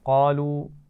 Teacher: قاف کو موٹا پڑھیں گے، چھوٹی مد ہے تو اس کو کھینچ کر پڑھیں گے